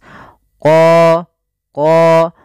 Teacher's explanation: dan kemudian pada lafal qo ini ada bacaan Mad thi'i qo untuk huruf q sendiri makhrajnya daripada pangkal lidah kita dengan langit-langit atas